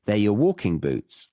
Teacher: Thinking about the stress, it's on the W or the first syllable of walking.